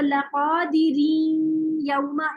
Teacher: जेर की आवाज और या की आवाज सेम ही होती है। तो लक़ादिरीन यौमा इस तरह हो जाए।